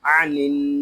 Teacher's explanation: یہاں نون کو ہم نون کے ساتھ ملا دیں گے، یہاں الف و لام نہیں پڑھے جا رہے۔ یہاں نون شدد ہے، اس کو غننے کے ساتھ پڑھیں گے۔ اس کو عنن اس طرح نہیں پڑھیں گے، اس کو پڑھیں گے عنن۔